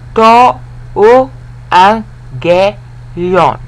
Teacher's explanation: You have to pronounce two G's like an NG.